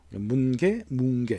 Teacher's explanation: 설단음과 설근음, 연구개음이 이렇게 동시에 발음되기 힘들잖아요. 그래서 앞에 있는 설단음을 뒤에 있는 설근음, 연구개음 자리로 끌고 가버려요. 그 자리에서 나는 것이 이응이거든요. · 여기서 뭉개, 이응 받침 쓴 뭉개는 문개의 니은이 뒤에 있는 기역의 영향을 받아가지고 이응으로 바뀐, 그러니까 문개가 뭉개로 바뀐 걸 거예요. 왜냐하면 앞에 있는 니은은 혀끝 소리, 설단음이라고 하고 뒤에 있는 기역은 목구멍 앞을 이렇게 막는 혀뿌리 소리, 연구개음이거든요. 설단음과 설근음, 연구개음이 이렇게 동시에 발음되기 힘들잖아요. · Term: 자음 동화